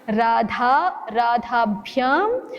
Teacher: द और ध का उच्चारण मिलना नहीं चाहिए। ध महाप्राण है उसको वैसे ही बोलिए।